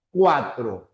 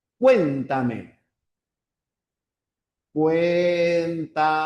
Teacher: Empieza de vocal cerrada y va hacia la vocal abierta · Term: diptongo creciente